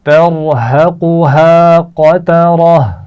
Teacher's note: را کو موٹا پڑھا آپ نے، قاف کو موٹا پڑھا، لیکن دونوں ہاں باریک پڑے جائیں گے، موٹے نہیں ہوں گے، اس کا خیال رکھنا ہے. قطرہ، قاف بھی موٹا ہے اور را بھی موٹی پڑی جائے گی